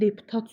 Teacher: Deputat sözündə son hecəyə düşür.